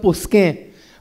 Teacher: Because in Konkani and in Portuguese, we don't pronounce the M. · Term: N nasal sound